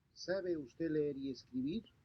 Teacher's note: In Spanish, simple yes or no questions end in a rising pitch, conveying a meaning of uncertainty.